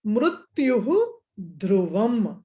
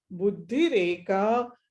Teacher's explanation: So mrutyuhu dhruvam is instead of visarga ra will come, and then mrutyur dhruvam. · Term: refa